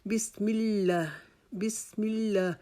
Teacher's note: لام کے اوپر شد اور اس کے اوپر کھڑا زبر، اس کے لیے ہم ایک الف کے جتنا اس کو لمبا کریں گے. اس کو جلدی سے بسم اللہ نہیں پڑھیں گے.